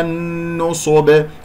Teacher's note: النون مشدد الغنة أكمل ما تكون ، جاورت الصاد المفخم مرتبة ثالثة، ليش مرتبة ثالثة؟ لأنها مضمومة،